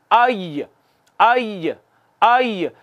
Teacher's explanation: वस्ते ज़बां ऊपर तालू की तरफ उठता है, मामूली सी जगह बाकी रह जाती है। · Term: या